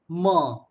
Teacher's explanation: a nasal bilabial is mer